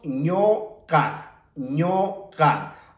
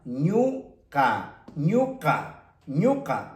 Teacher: en la presencia de esta consonante Q, esta vocal que tenemos como U, tiene que pronunciarse como O. Entonces, decimos ñoca, ñoca.